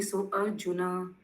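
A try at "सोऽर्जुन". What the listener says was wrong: अर्जुना नहीं, कृष्ण भावना अमृत नहीं है, स्वर्जुना। एक साथ बोलना, स्वर्जुना। नयति मामेति स्वर्जुना।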